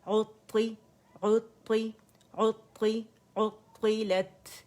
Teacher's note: طا جو ہے یہ مشدد ہے تو ہم نے کیا کرنا ہے؟ پہلی طا پہ آواز بند ہو جانی ہے اور دوسری کسرہ کے ساتھ ہے